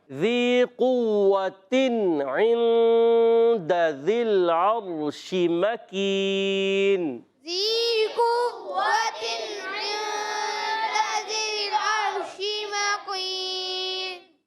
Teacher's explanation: کاف کا مخرج ہے زبان کی جڑ اور تالو کا سخت حصہ